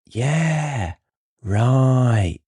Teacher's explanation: I elongated the yeah and go up and then go back down slowly with the right.